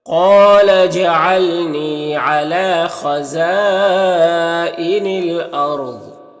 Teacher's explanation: ضاد حروف مستعلیہ میں سے پر پڑھیں گے · را ساکن سے پہلے حمزہ کے اوپر زبر ہے تو را کو پر پڑھیں گے